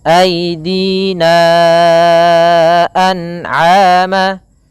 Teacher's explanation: Maka kita panjangkan aidina an'ama, ya, 4 harakat baru dilepaskan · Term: mad jaiz munfasil